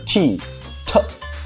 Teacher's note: the voiceless alveolar stop